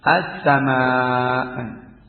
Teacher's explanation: dibaca panjang ini mad dibaca 6 harokat, 5 atau 6 harokat ya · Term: mad wajib muttasil